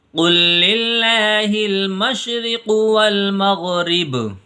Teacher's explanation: یہاں پر اللہ کا لام باریک ہوگا کیونکہ لفظ اللہ کے لام سے پہلے حرف کے نیچے زیر ہے، اس لیے اس لام کو باریک کر کے پڑھیں گے